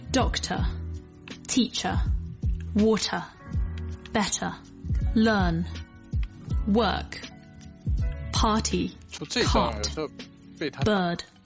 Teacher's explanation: So some examples of where this R is dropped off and replaced with a diphthong vowel, essentially a kind of longer version of the vowel, are words like doctor, teacher, water, better, learn, work, party, cart, bird. So dropping off the R sounds where there's no vowel sound after the R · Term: non-rhotic